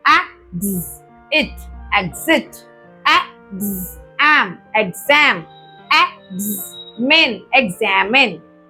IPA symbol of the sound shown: gz